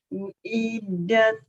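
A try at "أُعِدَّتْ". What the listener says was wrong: Iya, jadi ada huruf dal yang bertasdid, Ibu tekan.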